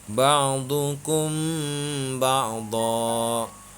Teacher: Cara membacanya mim mati dibaca samar karena hukum bacaannya adalah ikhfa safawi. Alasannya karena mim mati bertemu dengan ba.